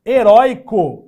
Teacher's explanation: Heróico é derivado de herói. Continua com o ditongo aberto, mas agora não é mais uma oxítona, e sim uma paroxítona.